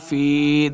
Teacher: فی فا زی یا فی 2 حرکات لمبا کرنا ہے